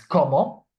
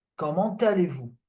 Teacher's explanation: So when a word ends with a consonant and the next word is a vowel, we do the linking between that last consonant and the vowel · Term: la liaison